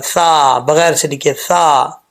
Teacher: یہ جو سا ہے، سا کے نیچے زیر ہے، سا زیر سی، بغیر سیٹی کے، اگر اس کو سی پڑھیں گے تو غلط ہے۔ سا زیر سی، زبان کی نوک اوپر والے دانتوں کے نچلے حصے سے لگے گی، اوپر والے جو 2 دانت ہیں ان کے نچلے حصے سے لگے گی، تو یہ سا پڑھا جائے گا